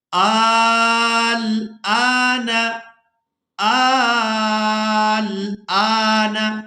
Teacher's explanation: ہم نے حمزہ کو کھڑی زبر اور مد کی وجہ سے کھینچنا ہے